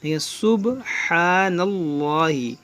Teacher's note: ہا کو کھینچیں گے اور با میں قلقلہ کریں گے